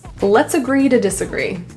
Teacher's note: The A in agree is pronounced as a schwa.